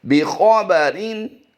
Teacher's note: ख़ा की अदायगी पुर होगी और रा की अदायगी बारीक